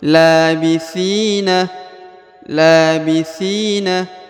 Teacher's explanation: Ti dibaca panjang dua harakat ya karena di depannya terdapat ya sukun atau ya mati